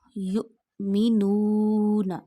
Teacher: You have to read hamza sakina with a sudden jerk because when jazam comes on hamza, you read it with a jerk sound